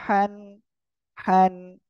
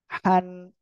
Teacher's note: গলাটা চেপে মুখ দিয়ে হালকা বাতাস বের করে পড়তে হবে।